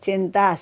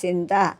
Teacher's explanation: చకారం అప్రమాణ భాషలో సకారంగా మాట్లాడటం